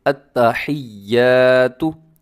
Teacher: लंबा भी करना है और मजबूती के साथ पढ़ना है, इसको आपने ढीला नहीं पढ़ना